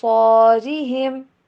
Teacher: صاد کو پر، اور ساتھ میں الف کو بھی پر